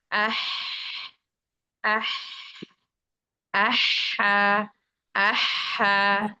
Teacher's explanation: huruf H itu punya sifat hams, artinya huruf H itu dia punya aliran udara yang mengalir